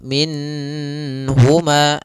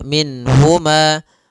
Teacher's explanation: Nun di sini harus jelas karena bertemu dengan huruf ha maka tidak boleh ditahan misalnya ditambah dengan gunna minhumaah ini enggak boleh atau ditahan suaranya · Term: izhar